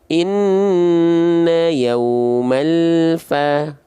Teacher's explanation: pastikan lam sukun di sini tidak memantul dan tidak terputus suaranya